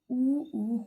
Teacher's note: ऊ होंठों से बोले जाते हैं, इसमें होंठ जो है गोल हो जाते हैं, तो ये है ओष्ठ्य।